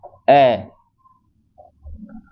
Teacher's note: वह स्वर जिसके उच्चारण में जीवा का मध्य भाग क्रियाशील रहता है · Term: मध्य स्वर